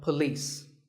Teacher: is police this isn't police or polis it's paw and beliefs with the stress on lease